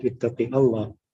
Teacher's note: Like leave the word Allah full and heavy lam.